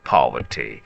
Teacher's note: In British English, the stress is on the first syllable Paul and the middle sound is soft and relaxed and the final T is light not sharp. So remember, poverty is a serious word, but the pronunciation is gentle and steady. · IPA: /ˈpɒv.ə.ti/